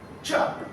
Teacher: Post-alveolar, voiceless, affricate sound.